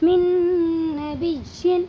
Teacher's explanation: اس میں ادغام ناقص ہوگا، اس کو بھی غنہ کے ساتھ ناک میں لے جا کر کے ادا کریں گے